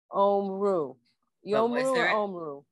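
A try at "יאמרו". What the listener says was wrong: Not Omru. Because it's a yud.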